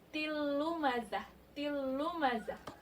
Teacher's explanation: Tilumazah juga sama, bunyi tanwinnya tidak berbunyi lagi langsung masuk ke huruf lanya. Hukumnya juga idgham bila gunnah, tidak dengung bacanya. Jadi tanwinnya langsung lebur ke huruf lanya, tidak berbunyi tanwin lagi, tapi tilumazah, tilumazah.